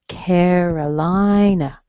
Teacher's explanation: Lie, strong on the lie